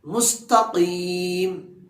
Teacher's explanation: قاف کو حلق سے نکالیں گے۔ مستقیم، صراط الذین، صراط الذین، ذال کو زبان کو دونوں دانتوں کے درمیان تھوڑا سا باہر نکال کر، جس طرح کہ ہم نے سبق نمبر 1 میں سیکھا تھا، صراط الذین انعمت، انعمت حلق سے نکالیں گے۔